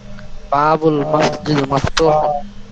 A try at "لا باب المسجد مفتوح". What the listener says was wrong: আগে লা বলতে হবে, লা লা বাবুল মসজিদ মফতুহুন।